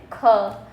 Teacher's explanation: ख क्या है? अघोष व्यंजन